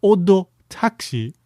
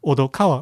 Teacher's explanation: Odo with a little tsu, like a glottal stop in between the o and the do